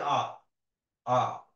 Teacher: জীব সামনেও যাচ্ছে না পিছনেও যাচ্ছে, স্বাভাবিক আছে। এটাকে বলছে মধ্য, মানে সে মাঝামাঝি আছে।